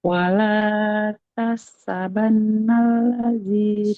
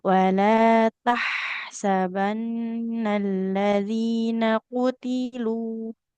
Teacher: Sempurnakan dulu Ibu huruf H-nya, mengalir suara dan juga nafasnya.